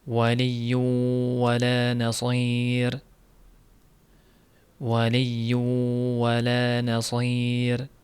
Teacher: ushlab turiladi ikki harakat g'unna bilan